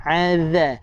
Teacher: Cara sebut huruf zal sama macam huruf tha tadi juga. Iaitu lidah kena keluar lebih daripada gigi